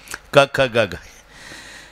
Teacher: तुमच्या बोटाला स्पंदन जाणवेल, त्याचा उगम कंठातून आहे. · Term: कंठस्थान